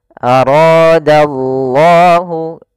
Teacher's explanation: ra-nya dibaca dengan tebal karena ra berharokat fathah · lafal Allahnya tebal, yaitu lafzul jalalah. Kemudian dia juga termasuk mad tabi'i, panjangnya 2 harokat.